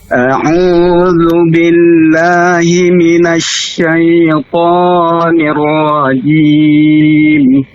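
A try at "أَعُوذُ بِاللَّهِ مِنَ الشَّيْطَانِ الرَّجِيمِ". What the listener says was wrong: Ulangin, ya-nya syaita, jangan syaita seperti berharakat ya-nya. Syaita.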